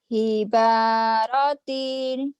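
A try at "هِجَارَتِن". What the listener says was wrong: hiba, salah, jim, jim. Ya, titiknya satu sampai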